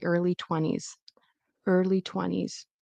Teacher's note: Notice how I did not pronounce the T.